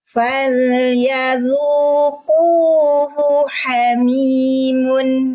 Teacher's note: Mim doma bunyinya mu. Jangan mo. Ya, jangan mun.